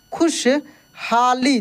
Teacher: तलव्य श का उच्चारण तालु से होता है